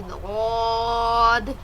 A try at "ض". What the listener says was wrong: تھوڑا سا اور موٹا.